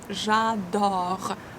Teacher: Open O sound. Open your mouth widely. J'adore. E is not pronounced.